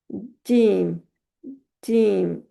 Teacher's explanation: अब जीम जो है उसका हमने मखरज देखा कि हमारी जुबान का दरमियान का हिस्सा ऊपर हमारे ताल्लु के साथ लगता है तो अदा होती है जीम